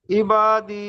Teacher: জি ইয়া সাকিবের ডান দিকে জের এসেছে, এটি হলো ইয়া মাদ্দা। ইয়া মাদ্দাকে এক আলিফ পরিমাণ টান দিয়ে পড়তে হয়।